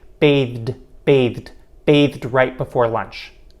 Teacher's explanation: released d and then the r sound because of this environment we fully pronounce the light release d sound and we don't delete it